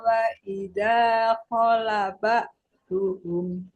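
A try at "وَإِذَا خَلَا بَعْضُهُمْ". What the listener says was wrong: Kholah, lanya panjang.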